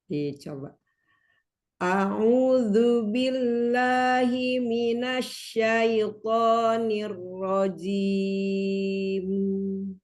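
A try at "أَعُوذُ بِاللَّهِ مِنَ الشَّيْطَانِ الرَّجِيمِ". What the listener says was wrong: Nah, shin-nya, Bu. Shin itu seperti suara siulan burung, tafashi. Minas syaitan. A'udzu billahi minasyaitonir rajim.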